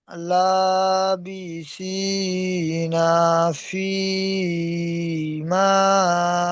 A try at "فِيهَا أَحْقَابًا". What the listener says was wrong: ফিহা, এটি হা হবে। ফিহা আহকাবা।